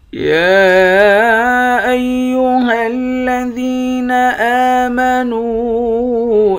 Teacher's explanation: ذال کو یا کے ساتھ ملا کر یا کو 1 الف کے برابر کھینچیں گے۔